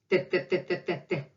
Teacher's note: Again, it's different from English T, because in English we touch our alveoles over there behind your teeth. In Russian, it's straight dental sound. Your tongue touches teeth, upper teeth.